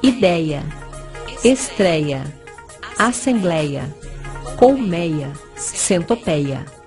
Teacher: escrevemos sem acento, mas não muda a pronúncia. Continua pronúncia com timbre aberto, mas sem acento agudo.